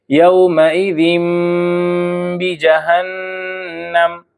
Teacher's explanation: اب یہاں دیکھیے یہ تنوین کے بعد با ہے، تو یہاں پر بھی ہم تنوین کو میم ساکن سے بدل دیں گے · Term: قلب